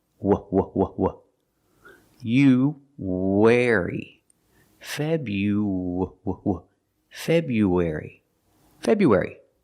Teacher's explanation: when we link you and air we have a sound in the middle it's like a w sound